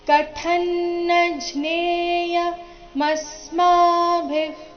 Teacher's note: ಮ ಮೇಲೆ ಆಘಾತ ಬರಬೇಕು ಮುಂದೆ ಸ್ಮ ಎಂಬ ಸಂಯುಕ್ತಕ್ಷರ ಬಂದ ಕಾರಣ · ಅನುಸ್ವಾರದ ಉಚ್ಚಾರಣೆ ಅನುನಾಸಿಕ ನ ರೀತಿ